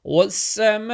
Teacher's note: waw join with the seen, alif lam silent, and meme stretch 4 to 5 seconds, and hamza zabar, hamza bottom of throat.